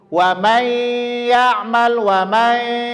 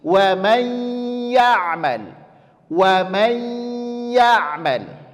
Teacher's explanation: Menyempurnakannya sekali lagi, bunyikan dia ke huruf i yang pertama. Menyempurnakan penyebutan idgham bi gunnah pada huruf ya yang pertama, bunyikan dia ke huruf i. Kesalahannya adalah bunyinya ke huruf e.